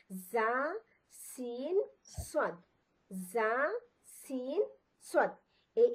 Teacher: আগা plus নিচের দাঁতের কিনারা থেকে আরো তিনটি হরফ বের হয়। জিহ্বার আগাটা আমাদের নিচের দাতের কিনার মধ্যে লেগে তিনটি হরফ উচ্চারিত হবে।